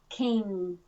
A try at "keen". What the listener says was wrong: So let the E be more important than the N. Keen.